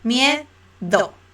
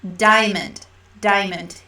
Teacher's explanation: the D is very similar to your D but you are actually going to see the tongue outside